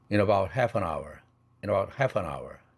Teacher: 앞 단어에 in 할 때 은 사운드가 링크 됐습니다. 그렇게 되면 in a가 아니라 in a 이렇게 됐죠.